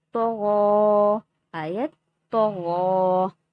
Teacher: تو کو بھی پر پڑھیں گے، غین کو بھی پر پڑھیں گے